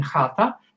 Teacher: is described as a voiceless velar fricative. Here we use the back of the tongue to produce this fricative.